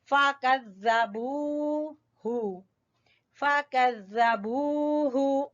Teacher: वाव मद्दा की वजह से, वाव माकबल पेश, तो ये वाव मद्दा है। फ़कज़्ज़बूहु, हु को नहीं खींचना, हु को छोटा पढ़ेंगे